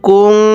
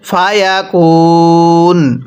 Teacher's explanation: এখানে নুন সাকিনটা গুন্নাহ করে পড়ব। নুন সাকিনের পরে ফাটি ইকফার হরফ, আর নুন সাকিনের পরে ইকফার হরফ থাকলে নুন সাকিনগুলো গুন্নাহ করে পড়তে হয়।